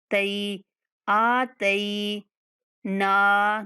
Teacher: पहले हमज़ा को खींचना है, उसके बाद आ के बाद या लीन है। तई आतई ना नून के बाद अलिफ मद्दा, नून को इसलिए खींचना है।